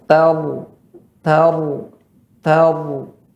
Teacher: Mengangkat pangkal lidah, suara dia naikkan ke atas. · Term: tebal